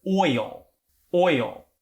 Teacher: it is perfectly acceptable in north american english to separate this into two syllables and it's a little bit easier to say because it gives